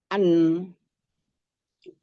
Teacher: namanya nun sukun bukankah dia berada di ujung lidah? Ujung lidah an.